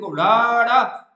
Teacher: ਫਟਕਮਾਂ ਫਟਕਮਾਂ ਕਿਉਂ ਕਹਿੰਦੇ ਇਹਨੂੰ ਕਹਿੰਦਾ ਵੀ ਇਹਦੇ ਉਚਾਰਨ ਵੇਲੇ ਜਿਹੜੀ ਜੀਭ ਹੁੰਦੀਹ ਤਾਲੂ ਨੂੰ ਛੂ ਕੇ ਝਟਕੇ ਦੇ ਨਾਲ ਜਾਨੀ ਕਿ ਫਟਕੇ ਨਾਲ ਹੇਠਾਂ ਹੁੰਦੀਹ ਇੱਕਦਮ ਝਟਕੇ ਨਾਲ ਹੇਠਾਂ ਹੁੰਦੀ ਹੈ ਤਾਂ ਕਿਹੜੇ ਕਿਹੜੇ ਫਟਕਾ ਵਿਅੰਜਨ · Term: ਫਟਕਵਾਂ ਵਿਅੰਜਨ